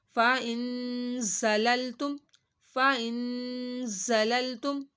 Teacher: نون ساکن کے اوپر گنہ کیونکہ زا آ رہا ہے